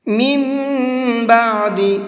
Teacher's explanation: من بعد، یہاں پر بھی یہ چھوٹا میم ہے، قاعدہ وہی ہے جو ابھی آپ کو پیچھے بتایا ہے، تو یہاں بھی غنہ کریں گے اور میم پڑھیں گے، نون نہیں پڑھیں گے